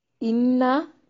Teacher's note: इन्ना नून मशद्दद पे गुन्ना जरूरी है।